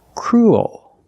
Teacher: what's different is your tongue is not straight it goes a little high in the back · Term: dark l